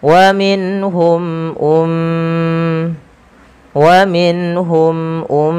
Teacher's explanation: tahan suara m ya karena ia mim berharakat tasydid dan kita hukumi dengan bacaan ghunah